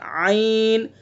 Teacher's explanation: عین کا مخرج وسط حلق